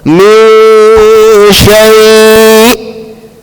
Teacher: because there's a hamza, now we're going to come to a complete stop, like a halt. Basically going to the makhraj of the hamza.